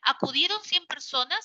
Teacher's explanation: tienes el tono final ascendente · Desciende la parte final y asciende también la parte final de la pregunta